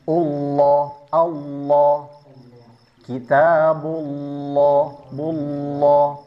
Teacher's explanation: Ini bukan sengaja dikasih vokal O, tapi itu karena tebal sehingga terkesan seperti huruf o. Bull sebenarnya bulla cuman tafhim tebul.